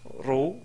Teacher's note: la dhamma, on prononce ro, donc c'est ro et non pas rou. Avec la kasra, on prononce ri.